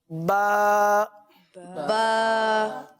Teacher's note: बा की जो अदायगी है वो दोनों होठों के तर हिस्से से ये अदा होता है